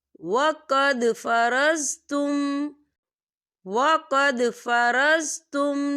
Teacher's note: وقد دال ساکن ہے، قلقلہ ہوگا